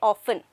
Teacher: It is not often. Here T is silent.